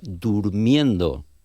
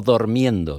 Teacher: Si conjugamos el verbo dormir, tenemos una O tónica en el infinitivo, pero después si tenemos que hacer el xerundio y es durmiendo, no dormiendo, y es durmiendo. Esa O cierrásenos en U en un contexto fonético